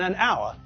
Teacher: we don't pronounce the first letter and so the word sounds as though it begins with a vowel it sounds as though it begins with the letter O okay